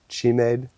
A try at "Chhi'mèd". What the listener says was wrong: Chhi'mèd. Well, don't pronounce the D.